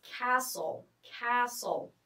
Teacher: Notice here the T is silent.